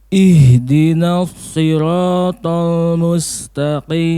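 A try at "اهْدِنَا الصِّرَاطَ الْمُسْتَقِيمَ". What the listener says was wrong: Ya, paling di huruf shad tadi ya yang paling nampak dulu. Huruf shadnya belum keluar tadi ya. Sekali lagi, untuk huruf shad itu tidak ada bedanya sama sekali ya dengan huruf sin kecuali tebal dan tipisnya saja. Ya, sama so dengan sa sebetulnya ya. So dengan sa sama. Soi sama dengan si ya. Apa bedanya tebal dan tipis?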